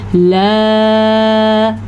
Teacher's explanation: لا اتنا لمبا اس الف کو کرنا ہے، الف کے اوپر مد ہے اور یہ مد 4 سیکنڈ تک ہم نے لمبی کرنی ہے